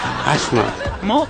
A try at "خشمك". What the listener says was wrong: مو هشمك، خشمك. هو ما عندهم حرف الخاء. خشمك. هو ما له حرف الهاء.